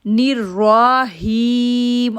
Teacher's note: اب را کو موٹا کریں گے کیونکہ را کے اوپر زبر ہے، اور ہی کو کھینچیں گے کیونکہ یا ساکن سے پہلے زیر ہے۔